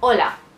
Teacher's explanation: It's hola, but have you ever wondered why it's not hola if they're writing it H-O-L-A? Because the H is silent. I mean, always. You write it sometimes, but you don't pronounce that. So it's hola.